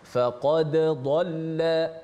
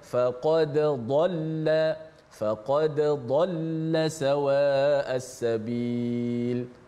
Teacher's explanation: Maka kita baca secara izhar, baca secara jelaskan dal mati, dan kebetulan huruf dal ada qalqalah, pastikan bunyi qalqalah tu